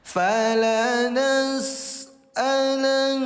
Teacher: nun bertasdid hukum tajwidnya namanya gunah. Gunah itu dengungkan dua harakat.